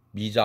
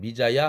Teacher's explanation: 반모음 이가 들어가고 아가 붙은 것입니다. 그렇게 해서 반모음 호칭은 본래가 조사가 야인데 그래서 미자야가 된 것입니다.